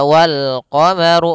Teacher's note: Kemudian pada lafaz ru, ru-nya dibaca tebal karena dia huruf ra yang berharakat dhammah